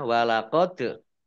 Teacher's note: dal sukun bacaan kolkolah ditampakkannya